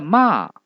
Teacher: 而第4声呢，则是由最高的5度一直降到1度